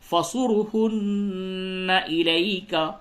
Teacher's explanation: نون مشدد ہے یہاں پہ غنہ کیجئے